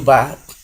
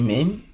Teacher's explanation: bunyi ba arus udara yang dikeluarkan melalui mulut sehingga dikenal dengan bunyi oral, dan bunyi mim arus udaranya dikeluarkan melalui rongga hidung